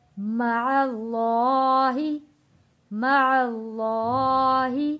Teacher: یہاں پہ اللہ کا لام ہم نے موٹا پڑھا ہے کیونکہ اللہ کے لام سے پہلے زبر آ رہا ہے